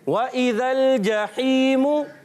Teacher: प्यारे बच्चों और मदनी चैनल के नाज़रीन, जब भी कभी वाव आता है याद रखें, वाव पर ज़बर हो, ज़ेर हो, पेश हो, कोई भी हरकत हो, तनवीन हो, याद रखें वाव जब अदा होगा होठों की गोलाई होगी